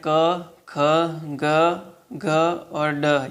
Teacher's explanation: ये सब कंठ वर्ण है, कंठ से बोले जाते हैं